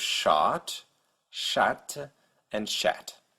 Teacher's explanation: The French variant A is a little more forward in the mouth than the American A, so your tongue is a little more towards the front of your mouth, about halfway towards the American A.